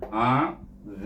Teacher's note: Jadi zim cuma dia terangkat pangkal lidah, itu sifatnya lain dengan zal dengan sa. Jadi bunyinya azim, ditutup bibir kita dengan mahraj mim yang disukunkan.